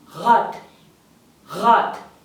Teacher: R at the start has a R sound, which is more like you're gargling or something